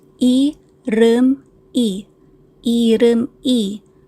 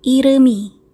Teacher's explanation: mawawala yung value nung I yung kakainin siya nung batchim na miyem. So, again, ang spelling is I-rem, I, but when you say it, iremi.